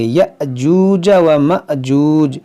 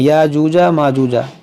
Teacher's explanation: حمزہ ساکنہ ہے تو اس کو جھٹکا دے کر پڑھیں گے